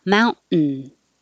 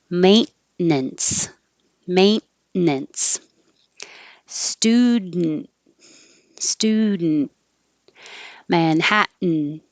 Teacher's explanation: when the n makes its own noise it becomes its own syllable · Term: syllabic end